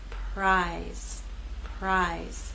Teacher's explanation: down here is voiceless you will not feel vibration here again R will begin without vibration and then you'll add your voice as we move into I prize prize and in this last